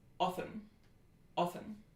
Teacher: It's a short low mid back rounded lax vowel